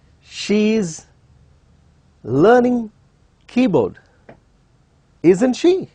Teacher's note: we also use question tags in a rising tone